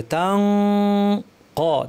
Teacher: যদি মিলিয়ে পড়ি তাহলে আছে তানউইন, তান, তারপরে কফ আছে, ইখফা করতে হবে। কফের মাখরাজে জিব্বা লাগিয়ে দিব, নাক থেকে গুন্না করব, আর কফ ভারী হয় গুন্নাটা ভারী হবে